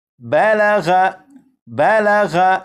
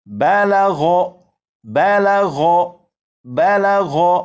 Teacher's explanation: یہ جو آپ نے غین پڑھا، یہی غین یہاں پر اس لفظ میں موجود ہے، تو اس لفظ کو اس طرح نہیں پڑھیں گے بالغ، بالغ، یعنی غین کو باریک نہیں پڑھیں گے بلکہ غین کو پور یعنی موٹا پڑھیں گے